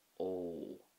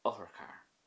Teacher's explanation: when you add the fada on top, it becomes a longer O sound. O. So there's more stress and emphasis, and you usually say it that little bit longer. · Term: O Fada